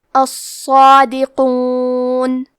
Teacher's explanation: کیونکہ اس پہ کھڑا زبر ہے تو ہم صاد کو اور مد الف کو دونوں کو تفخیم سے ادا کریں گے۔ · حرف القاف کو موٹی آواز میں پڑھنا ہے۔